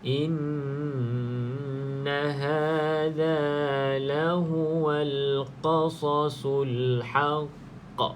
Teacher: Jadi di sini qalqalah yang paling kuat sekali detakan dia kena kuatkan al-haqq. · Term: qalqalah kubra